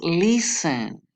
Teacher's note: Es listen. La sílaba tónica la lleva en la primera sílaba y no en la última.